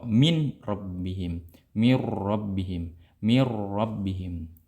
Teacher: akan tetapi jangan lupa diperhatikan ya, sifat daripada ro-nya itu ditakrirkan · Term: takrir ro